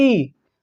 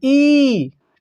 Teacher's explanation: ई जब हम बोलते हैं थोड़ा झटके से बोला जाता है ई, ठीक है। लेकिन ये बड़ी को जब हम बोलते हैं तो लंबा बोलते हैं ई